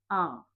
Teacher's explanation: विवृत में सबसे अधिक खुलेगा जिसे विशाल से हम याद करेंगे और एक ही स्वर है ऐसा आ और अर्ध विवृत स्वर अ ए ओ ओ जिसमें मुख विवृत से कम और अर्ध संवृत से अधिक खुलेगा।